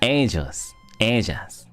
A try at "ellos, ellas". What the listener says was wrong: Beautiful.